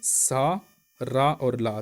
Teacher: हमारी जीभ जो है दांत और मसूड़ों को टच करती है, उनको बोलते हैं वर्त्स्य व्यंजन